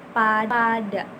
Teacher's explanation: mulut itu menutup, bibir itu menutup lalu melepaskannya